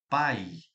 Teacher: O A é forte, o A é pá, pai, pai. Mas olha como o I já vai sumindo, pai. Ele faz um papel aqui de semivogal e o A vogal.